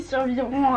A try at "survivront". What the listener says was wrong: Il manque un R. Non, t'as dit survivront.